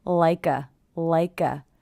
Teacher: i hear the k linking to the schwa